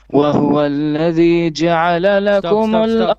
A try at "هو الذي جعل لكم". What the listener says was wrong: Stop. I think you said وهو الذي. There is no wa. هو الذي.